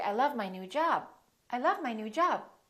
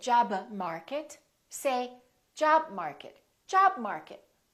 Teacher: you can hold the B you can hold the Stop